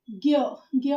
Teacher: ज्ञ में ग और य की साउंड है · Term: संयुक्त व्यंजन